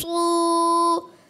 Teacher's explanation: صاد شروع سے ہی گول نہیں ہونے چاہیے, صرف پیش آئے گا نا پیش میں گول ہوں گے. دیکھیں بغیر ہونٹ گول کیا آپ نے موٹا کرنا ہے.